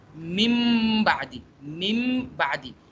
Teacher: اب ہم نون ساکن کو نہیں ادا کر رہے، الٹا ہم میم ساکن کو ادا کر رہے ہیں